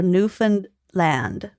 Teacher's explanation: there's supposed to be a slight guttural stop between Newfound and land